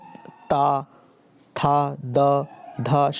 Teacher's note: तो जब इन सारे को बोलोगे ता, था, द, ध, शा, तो अगर बोल के देखेंगे तो आपको फील आएगा कि आप दांतों के पीछे के हिस्से को आप टच कर रहे हो, तो इसलिए इसको दंत्य बोलते हैं